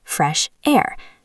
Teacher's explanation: Get some doesn't link because it's consonant to consonant, but fresh air does link.